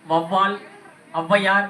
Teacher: முதலில் மட்டும் குறுகி ஒலிக்கும் அது இடையிலும் கடையிலும் அவ பயன்படுத்தல வராது அதனால முதலில் மட்டும் அரை மாத்திரை குறைந்து ஒன்றரை மாத்திரை அளவாக ஒலிக்கும் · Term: அவகார குறுக்கம்